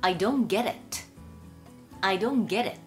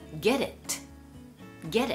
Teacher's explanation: T▁プラス母音の時には▁T▁はやはり連結はするんですけれども、連結した後弱い▁D▁になります。